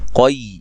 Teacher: قاف کو یا سے سختی سے ملانا ہے، اور قاف کو موٹا ادا کریں گے